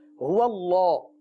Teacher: ہا بھی باریک ادا ہوگا، واو بھی باریک ادا ہوگا. اللہ عز و جل کے لام کو پر پڑھیں گے.